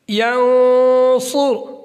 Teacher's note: صاد موٹا پڑا جائے گا